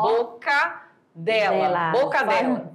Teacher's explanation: Se fala, ainda mais quando fala rápido, aí que soa exatamente, ruim, né? É como se essa pronúncia ficasse uma só, boca dela, percebem aí? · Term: cacofonia